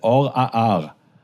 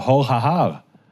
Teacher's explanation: they're not distinguishing between those guttural letters, like we don't do today in many Israeli pronunciations